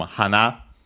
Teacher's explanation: hana flower accent on the last syllable